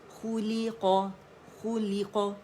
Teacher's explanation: दम्मा पे होंठ गोलूंगे